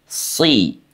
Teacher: Seterusnya sahabat Al-Quran, kesalahan di huruf sod ya, itu tidak menebalnya bunyi si. Padahal huruf sod itu baik fathah, kasrah, dhamma itu sama-sama dibaca tebal walaupun ada tingkatannya ya